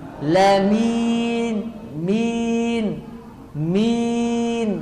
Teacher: kata beliau dibaca tipis, lamin, min, bukan dari hidung